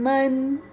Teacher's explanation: دونوں ہونٹ، اوپر اور نیچے والا ہونٹ جب نرمی سے ملتا ہے تو میم ادا ہوتا ہے